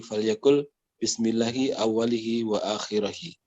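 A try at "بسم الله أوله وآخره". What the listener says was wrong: Bismillahi awwalahu wa akhirahu. Nah, huna kata tibai laisa awwalihi, laisa awwalahi, lakin awwalahu, wa kadzalika akhirahu. Nah, domirha la naqul bil kasra illa madza, illa harokah, ya, al harakatu allati qablaha al kasra au al harfu alladhi qablaha al ya as-sakinah.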